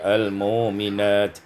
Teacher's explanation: ibdalul hamzati wawan, ditukar hamzah dengan waw menjadi al-mu'minat